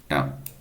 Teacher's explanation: मूर्धन्य अल्पप्राण अघोष व्यंजन वर्ण का उदाहरण है